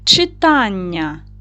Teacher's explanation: Читання стоїть наголос на другий склад на а.